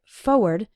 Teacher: when speaking fast, we sometimes say it like forward, as if there wasn't that first R